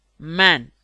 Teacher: M. Bilabial nasal. Man.